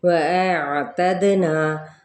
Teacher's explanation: واو ہونٹوں کی نا تمام گلائی کے ساتھ، دال پہ کلکلا